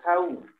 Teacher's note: Wau sukun sebelumnya fathah dibaca pendek